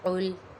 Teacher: قاف حرف مستعلیہ میں سے ہے، اسے پر ادا کریں گے۔ لام ساکن ہے، ساکن والے حرف کو اپنے سے پچھلے متحرک حرف سے ملا کر پڑھتے ہیں۔